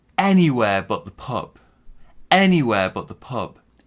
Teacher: big stress on anywhere small stress on the noun that comes at the end